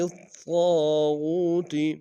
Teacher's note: لام کو طاغوت کے طاء کے سامنے لانا ہے، شد ہے زور دیں گے، الف مدہ طاء کے ساتھ ایک انداز میں کھینچیں گے، طاء کو موٹا ادا کریں گے، غین کو واو کے سامنے لیں گے، واو مدہ ایک انداز میں کھینچیں گے۔